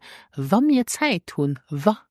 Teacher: often in spoken but also in written language we will drop those final n